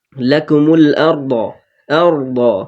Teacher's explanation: দ, দটাও heavy অক্ষর, ওই জন্য একটু দেবে বলবো। জিভের পার্শ্ব কিনারার ওপরের দাঁতের গোড়ার মাড়ির সঙ্গে লাগিয়ে উচ্চারিত হয়।